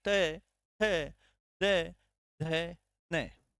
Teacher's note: त वर्ग का स्पर्श कहां होता है मित्रों दंत में होता है